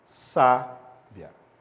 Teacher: sábia também é uma paroxítona, porque o acento tônico, que também é representado graficamente pelo acento agudo, está na penúltima sílaba